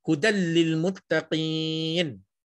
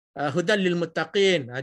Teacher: Hudal masuk dalam lam terus. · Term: Idgham bila gunnah